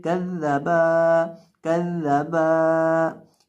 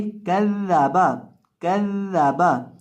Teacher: आपने बा को बिना लंबा किए पढ़ना है और इसी तरह से दाल को भी लंबा नहीं करना और काफ को भी लंबा नहीं करना।